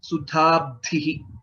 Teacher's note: there are two mahapranas, dha and dha again